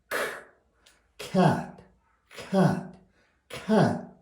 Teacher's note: 변하는 것을 보겠습니다 아 크 그 크크는 목구 뒤에서 나오는 소리인데이 혀에 뿌리가 목구멍을 막을 때 나는 소리입니다 구멍을 막고 나서 그다음에 막았다가 터트려야 우리가 고양이 발음을 한번 해